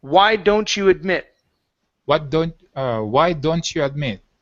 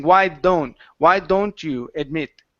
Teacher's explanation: Yeah, because when you were pronouncing your D's and you were coming here, you were saying, why don't you admit? Okay, so you were using a soft D instead of the harder D.